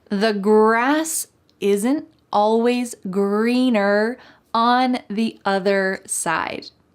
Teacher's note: don't forget that hard R sound in the word greener at the end, and also in the word other. Having that strong colored R sound at the end of the word is essential in American English.